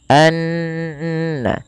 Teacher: ada bacaan gunnah yang dimana gunnahnya adalah dimasukkan ke rongga hidung kita suaranya anna, ya, dan dia ditahan sepanjang 2 harokat.